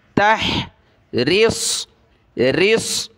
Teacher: را کو باریک کیا، صاد کو موٹا کیا